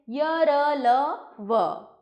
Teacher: इनका उच्चारण करते समय वायु मुख के आंतरिक अंगों को कम स्पर्श करती है और उसकी गति भीतर की ओर होती है। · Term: अंतस्थ व्यंजन